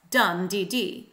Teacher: a three-syllable dactylic foot, stressed, and then two unstressed